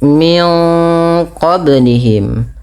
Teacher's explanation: tahan bunyi suara min qa-nya karena pada lafal ini ada bacaan ikhfa. Ikhfa adalah membaca antara izhar dan idgham.